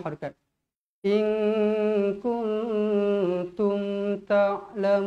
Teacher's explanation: Mestilah dengung dengan kadar dua harakat. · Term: ikhfa hakiki